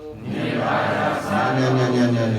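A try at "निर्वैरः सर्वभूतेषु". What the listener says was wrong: We're changing the melody.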